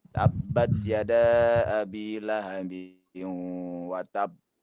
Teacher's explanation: Ada tasdid, berarti maksudnya ada 2 ba di situ. Kita harus mencukupkan 2 ba. Watab pertama itu bagian dari ba ya. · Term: kol-kolah yang paling besar